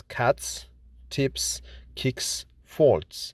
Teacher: The pronunciation of regular plurals, genitive, and third person singular S when we add S at the end of those words. The S is pronounced as S sound after voiceless sounds or consonants. As we have seen in this course, the voiceless consonants are the consonants that are produced without vibration in the vocal cords, like in the words cats, tips, kicks, faults.